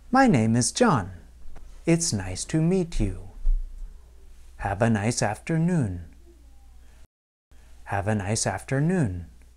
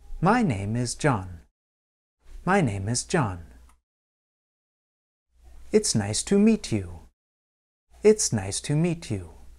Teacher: In each of these statements, my intonation fell toward the end of the sentence. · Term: falling intonation